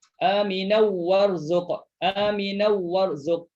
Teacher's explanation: Idgham bila gunnah. Masukkan tanwin dalam waw. Jangan dengung.